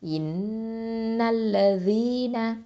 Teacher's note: அடுத்தது தால் கெஸ்ரா யா சுக்கூன் தி, யாவுல் மத்து 2 ஹரக்கத்தை நீட்டணும். நூன் ஃபத்ஹா ந, இன்னல்லதீன.